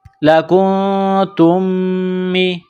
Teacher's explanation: میم ساکن کے بعد اگلی میم ہے جو مشدد ہے تو غنہ کریں گے اور تا کو اس میم کے ساتھ ملائیں گے، تا میم